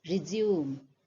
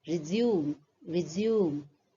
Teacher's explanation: what you will notice is the stress is more on the second syllable